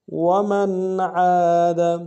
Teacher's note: نون ساکن میں یہاں پہ اظہار ہوگا، عین کے ساتھ الف مدہ ہے، 1 الف دار میں کھینچیں گے